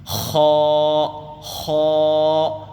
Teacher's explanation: جب اس کو ادا کرتے ہیں تو تھوڑی سی کھرکھری آواز، کھردری آواز آتی ہے